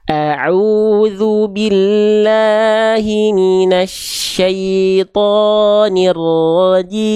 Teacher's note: Hamzah tipis maka jangan sampai O tapi A.